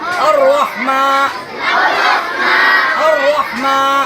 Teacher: रा को पुर करेंगे, रा को मोटा करेंगे